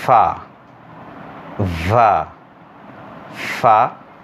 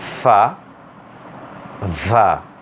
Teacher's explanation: The first pair, fa, va, labiodental, that is upper teeth and lower lip